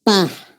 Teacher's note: es como una explosión el aire está encerrada en la cavidad bucal y sale con fuerza